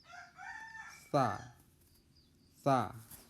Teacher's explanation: Sa di sini letakkan ujung lidah di gigi atas.